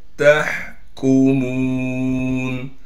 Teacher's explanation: यौमिल क़ियामती इन्ना लकुम लमा तहकुमून ता को हा से मिलाएंगे इसलिए कि हा साकिन है। हा को साफ करके गले से निकालेंगे। काफ को बारीक करके पढ़ेंगे।